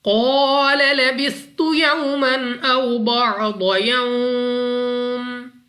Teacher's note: वाव साकिन से पहले जबर वाव लीन बगैर खींचे बगैर झटका दिए पढ़ेंगे, यानी जल्दी से